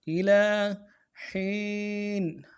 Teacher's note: ومتاعا عن إلى حين، إلى حين، إلى میں حمزہ کو نرم سے ادا کریں گے، لام کے اوپر کھڑا زبر ہے، ایک الف دال میں کھینچیں گے۔